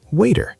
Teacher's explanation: In American English, the T between two vowels often sounds like a D.